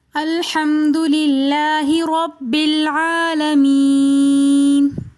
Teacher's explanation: الحمد کے بعد للہ میں لفظ اللہ کو باریک پڑھیں گے کیونکہ لفظ اللہ کے نیچے زیر ہیں